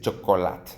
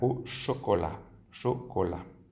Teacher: Las T's al final de las palabras, como las S no se pronuncian